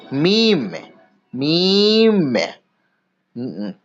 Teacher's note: 15 নম্বর মাখরাজ দুই ঠোঁটের ভিজে অংশ হতে উচ্চারিত হয় মিম। দুই ঠোঁটের ভিজে অংশ মিলিত হয়ে উচ্চারিত হয় মিম। আমাদের ঠোঁটের বাইরের অংশ শুকনো এবং তার ভেতরের অংশ ভিজে, সেই ভিজে দুই অংশ মিলিত হয়ে উচ্চারিত হয় মিম, মিম।